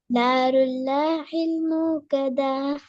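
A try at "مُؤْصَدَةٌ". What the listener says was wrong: மூக்கதா வரலையே அலிஃப் நீட்டு தா நீட்டு தானே படுது மூக்கதா தால நீட்டப்படாது மூக்கதாண்டு போயிடாது மூக்கத த என்று பெரிய ஹார்ட சவுண்டுக்கு போகணும் ரெண்டாவது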